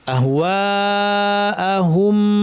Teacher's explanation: ওয়ালা ইনিত্তাবা'তা আহওয়াআহুম, এখানে মাদ্দের হরফ আলিফের পরে হামজা একই শব্দে 2 আলিফ টানতে হবে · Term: মাদ মুত্তাসিল